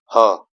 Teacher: यह कंठ वाला भी है और महाप्राण वाला भी